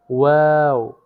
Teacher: দুই ঠোঁটের গোল করে সামান্য খোলা রেখে উচ্চারিত হয় ওয়াও